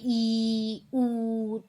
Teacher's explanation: संवृत यानी कि बोलते समय कम खुल रहा है हमारा मुंह